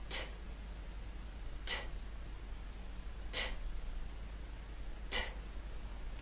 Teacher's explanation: As you say the T sound, the puff of air should be strong enough to move the paper in front of your lips. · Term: true T